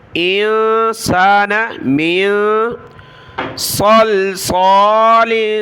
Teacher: انسان من صلصال، صاد اور یہاں صاد دونوں کلرفل ہے، دونوں کو موٹا پڑھنا ہے۔ سیٹی کی آواز آئے گی جس طرح سین میں آتی ہے، لیکن سین کو باریک پڑھنا ہوتا ہے اور صاد کو موٹا۔ لام کے نیچے دو زیر جو تنوین کلرفل ہے، تو یہاں بھی ہم نے ناک میں آواز پیدا کرنی ہے۔